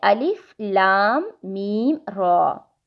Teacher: صرف را کے اوپر کھڑی زبر ہے جس کو ہم نے 2 سیکنڈز پڑھنا ہے